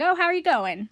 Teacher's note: In American English, when you ask a question, your voice goes up at the end. In both British and Australian English, your voice drops at the end. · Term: intonation